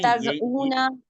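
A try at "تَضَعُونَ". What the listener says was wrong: नहीं, इसमें आप दरमियान वाले हरफ के ऊपर जो है ना वो जज़म पढ़ रहे हैं। जज़म नहीं है, वो ज़बर है। याज़ाउ, याज़ाऊना, दोबारा करें, याज़ाउ।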